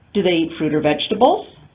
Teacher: So open choice question with rising intonation and only one intonation unit.